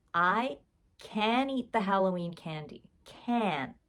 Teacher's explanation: I'm not even saying that end T because English speakers don't say the tea